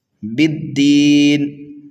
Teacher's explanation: یہاں پر وقف کریں گے تو نون کو ہم ساکن کر دیں گے، یہاں پر بھی وقف بالاسکان ہو رہا ہے۔